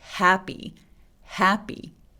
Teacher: 바람소리 먼저 나오고 있는 거예요 그래서 해 너무 빨리 모음으로 가지 마시고요 happy happy 이렇게요 자